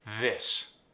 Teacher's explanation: Vibrates. Voiced. Becomes a D.